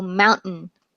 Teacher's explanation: especially with button we have that partial T followed by the glottal stop